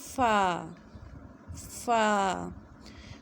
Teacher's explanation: اوپر والے دانتوں کا سرا جب نیچے والے ہونٹوں سے لگے تو ادا ہوتا ہے فا